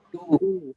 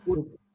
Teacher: when we say two, there is a long oo sound, and when we call it put, there is short oo